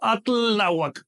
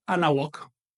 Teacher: cuando uno atl con náhuatl, le elimino el sufijo TL. Así que no digo atl náhuatl, no, digo anáhuac.